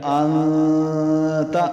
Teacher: اب حمزہ نون زبر ان، گنہ پورے ایک الف مقدار پوری کرنی ہے، تا زبر تا کیا بن گیا انتا۔